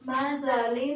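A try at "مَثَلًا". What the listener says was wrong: یہ جو حروف ہیں ان پہ بالکل کمپرومائز نہیں کرنا ان کو پڑھتے وقت. اب جب ہم مثالن کہیں گے تو ہماری آواز سین کی آئے گی، تو جب ہم مثالن پڑھیں گے تو پھر صحیح معنوں میں سا کی آواز کو ہم خارج کر سکیں گے.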